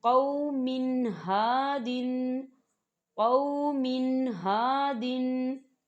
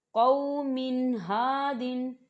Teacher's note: तनवीन के बाद हा आ रहा है। हा जो है ये हरूफ हल्की में से है तो यहाँ पर गुन्ना नहीं होगा।